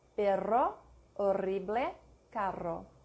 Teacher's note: double R, a trill or a tongue roll. No equivalent sound in English.